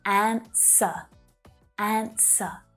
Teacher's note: That W is silent. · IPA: /'ænsə/, /ˈænsə/